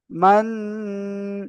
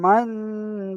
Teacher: নুন সাকিনের আওয়াজকে নাকে তুলে একার পরিমাণ গুন্না করে পড়তে হবে